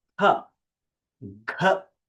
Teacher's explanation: All of them have these forceful expulsion of air, and therefore they are called as Mahapranas.